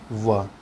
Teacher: दंत दांत और होंठ से उच्चारित वर्ण है व